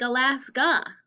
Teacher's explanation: really it's like alaska when the a sounds like uh so we're gonna draw the upside down sign the schwa sound